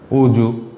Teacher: আমরা যদি অজু লিখি তাহলে উচ্চারিত বানান হবে অজু। ওকারান্তে পরিণত হয়েছে এবং অন্তস্থ জ বর্গীয় জতে পরিণত হচ্ছে।